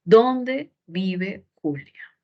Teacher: es una oración interrogativo con pronombre no es absoluta el tono es descendente